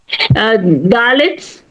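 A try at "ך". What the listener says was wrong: Instead of Chaf Sofit, she pronounces Dalet.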